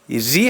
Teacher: Tamam bitirdim zaten Merak etmeyin ri ri harfi incedir Keskin arkadaşlar burada ri yani ince bir okuyuş yapıyoruz kesre ile